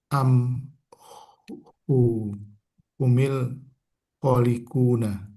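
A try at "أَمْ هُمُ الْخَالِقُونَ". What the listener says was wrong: hidupnya nggak pakai kasroh, hidupnya pakai doma. Pakai doma. Am humul.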